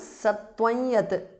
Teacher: Anuswara changes to the nasal of ya.